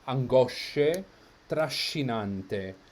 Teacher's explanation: a doubled sh sound in Italian in the middle of the word